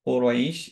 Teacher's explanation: কোরাইশ এটা 4 দিয়ে পড়বো আমরা, কফ হেভি অ্যান্ড র হেভি